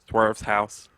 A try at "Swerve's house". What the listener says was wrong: It sounds like you were trying to say with a lisp.